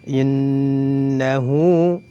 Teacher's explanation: Huruf berikutnya innahu, nun gunnah musyaddadah, ditahan dua harokat, diiringi dengan gunnah. Innahu, hu dibaca dua harokat karena dihukumi mad silah qasirah